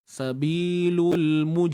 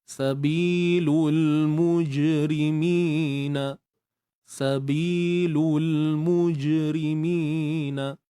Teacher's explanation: Untuk jim yang bersifat qalqalah ni, ketika sukun kita kena pastikan bunyi tu tidak bocor lah.